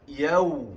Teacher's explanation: pada huruf waw yang mati itu ada sifat rakhawah, suara yang mengalir. Jadi sebutannya agak bertempoh.